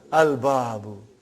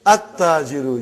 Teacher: At-tajiru. You did not pronounce lam. Why you did not pronounce? Because it is sun letter.